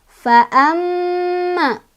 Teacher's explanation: dibacanya didengungkan dan dengungannya ditahan 2, 3 atau 4 ketukan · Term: gunnah